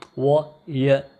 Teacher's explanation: These are called, in phonetics and phonology, these are called j and wo, because these are very close to vowel sound. There isn't any such sort of friction or obstruction while in the articulation of these sound. Wo, y, there isn't any friction, yeah, you can say stoppage of air. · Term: semi-vowels